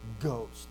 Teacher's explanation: you have this voiced g, and then you have aspiration, ghost, and you breathe out, okay?